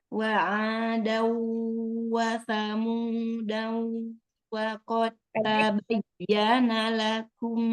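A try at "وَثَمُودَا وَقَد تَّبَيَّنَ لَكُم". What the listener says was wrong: Saja itu pendek. Wa samuda wa qad tabayyana lakum. Danya pendek. Bukan, itu alifnya tandanya buletin. dianggap tidak ada.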